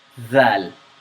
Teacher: In the letter dhal, the tongue comes out in between your teeth.